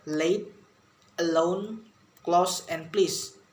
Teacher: contacting the tip of the tongue to the alveolar ridge so that air passes through both sides of the tongue, and the sounds produced is L. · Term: Laterals